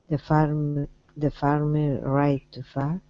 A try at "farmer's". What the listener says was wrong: give me an S at the end